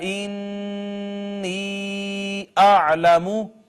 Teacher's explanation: نون مشدد ہے اس وجہ سے ہم نے غنہ کیا ہے